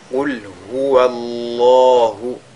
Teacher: Si vous faites Qul huwa Allahu, dans ce cas, même le waw a été lu avec at-tafkhim. Il faudra juste faire at-tafkhim lorsque vous lisez la lettre lam. Qul huwa Allahu ahad, de cette façon-là.